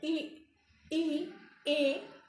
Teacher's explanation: जीभ का जो ये आगे का हिस्सा है ये हल्का सा ऊपर उठता है, ई, ए। तो ये हो गया अग्रभाग।